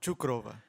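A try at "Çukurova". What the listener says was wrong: C as like CH. Cukurova.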